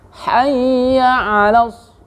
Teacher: Hayya 'alas ya, hayya jangan hayya. Tapi hay pakai hak kecil. Harus lembut ya.